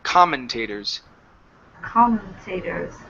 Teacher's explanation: Stress at the very beginning.